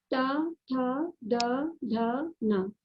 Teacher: ता वर्ग त, थ, द, ध, न, इनका इस्तेमाल दांत के माध्यम से किया जाता है। दोनों दांतों को मिलाकर बोलना चाहिए, ता, था, द, ध, न, इसलिए इनको दंत वर्ण कहा गया है।